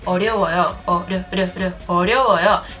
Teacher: because it is enclosed between the sound O and yo, two vowels, it is pronounced as a R sound.